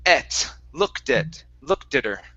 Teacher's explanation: when I say at, I'm really not saying ah and opening up my mouth really wide for the A, it's et, looked at her.